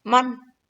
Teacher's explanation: Nun matinya jelas. Man. Tidak boleh dibaca mang ya.